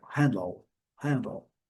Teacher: Quase o D nem é pronunciado